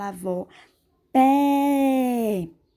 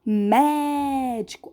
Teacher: eu abro mais a boca quando eu falo avó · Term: som mais aberto